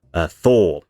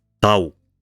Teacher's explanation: You went from a voiceless fricative to a voiceless stop. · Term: fortition